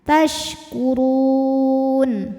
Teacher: Mad tabi'inya waw sukun didahului harokat dhammah, kemudian huruf yang disukunkannya nun. Maka ra panjang, boleh 2, boleh 4, ataupun 6 harokat asal konsisten dalam sekali bacaan. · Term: mad arid li sukun